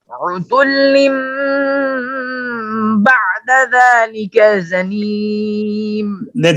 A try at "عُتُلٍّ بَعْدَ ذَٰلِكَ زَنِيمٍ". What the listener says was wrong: دیکھیے ذالکا اور زنیم میں یہ ذال ہے یہ زا ہے، دونوں میں فرق کیجئے۔ عتل بعد ذلك زنيم